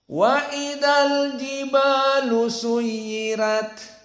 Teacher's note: Adapun bagi qiraah Wars dibaca flat, semuanya datar karena ra dibaca dalam keadaan at-tarqiq.